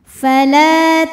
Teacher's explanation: hamzahnya tertahan suaranya ya karena sifatnya dari segi suara tuh syiddah kuat ya tertahan